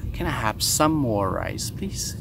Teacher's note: She combines some more and make it summer. Sound like the season.